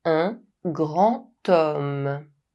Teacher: As you can see, the word “homme” starts with the consonant H. But, as H is silent, the word starts with the vowel sound [ɔ]. Liaisons can happen between the final silent consonant of a word and the word that follows if it begins with a vowel or a mute H.